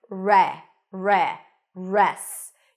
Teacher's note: you start with an R sound there is no W here okay just an r